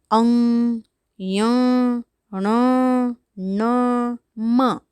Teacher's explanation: અનુનાસિકો એટલે એવા વ્યંજનો કે જેને પ્રોનાઉન્સ કરવા માટે, જેને ઉચ્ચારવા માટે નાકમાંથી હવા છે એ બહાર નીકળે.